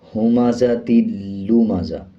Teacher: اسی طرح آگے دیکھیں، کاف کے بعد لام ہے، اس کے اوپر شد ہے، لام کو مضبوطی کے ساتھ بھی ادا کیا جائے گا اور پچھلے الفاظ یعنی کاف کے ساتھ ملا کے پڑھا جائے گا